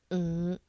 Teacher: The fifth tone is the low rising tone. It starts almost the same pitch as the second tone, but only rises to about the medium level tone.